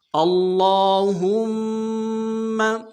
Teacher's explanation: اللہم، حمزہ کو لام کے ساتھ ملانا ہے، لام کے اوپر تشدید زور دیں گے، لام کے اوپر کھڑا زبر ہے، ایک دال میں کھینچیں گے، اور ہاں کو میم کے ساتھ ملانا ہے، میم کے اوپر تشدید زور دیں گے